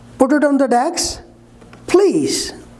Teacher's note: falling then rise this is called falling rising intonation